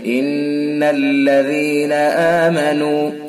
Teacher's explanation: ان حرف غنہ ہوگا، 1 الف کے برابر ناک میں آواز لے جائیں گے